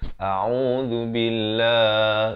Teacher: hamzah, makrahnya di pangkal kerongkong a, ain baris dhammah di pertengahan kerongkong u, zal di hujung lidah